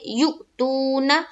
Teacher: ایک الف کے برابر کھینچ کر پڑھیں گے، جیسے یؤتو، نہ نون کے اوپر زبر کی حرکت ہے، زبر کو جلدی پڑھیں، تھوڑا بھی نہ کھینچے